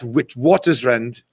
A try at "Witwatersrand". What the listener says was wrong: So a W's the V. It's Witwatersrand.